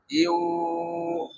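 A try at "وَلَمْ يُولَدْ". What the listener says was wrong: হ্যাঁ টানতে হবে বলেন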